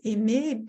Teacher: Vous allez avoir ensuite une chute de ce E qui va allonger la voyelle précédente, aimer, et vous allez ensuite aboutir à une prononciation qui ne distingue plus totalement le masculin du féminin lors de l'oralisation.